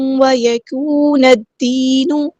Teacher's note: لام یہاں پہ لام شمسی ہے، اس کو ہم ظاہر نہیں کریں گے